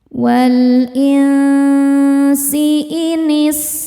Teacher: Karena nun sukun bertemu huruf sin. Cara membacanya nun disamarkan ke sin disertai bunyi dengung. Samar dan dengungannya sama besar. Walsi inis sinnya berdesis ya. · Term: ikhfa hakiki, ikhfa hakiki awsat